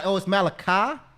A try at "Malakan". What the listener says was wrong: You just don't say the Y. That's it.